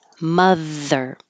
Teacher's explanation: it's a voice th